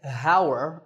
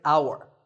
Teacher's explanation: the spelling has an ‘h’ at the start but that ‘h’ is silent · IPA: /au-ər/